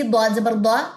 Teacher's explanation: ضاد کو موٹا پڑھیں گے، زبر کو لمبا نہیں کریں گے